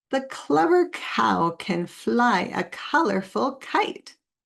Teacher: you lift the back of your tongue and you keep your tongue tipped down. Then you make a puff of air. You could also say that the K sounds like coughing, or give it a name, like the quiet back sound, because we make it in the back of our throat, or the coughing sound, because it sounds like a cough.